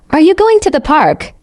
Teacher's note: For example, when you ask, "Are you going to the park?" your voice goes up at the end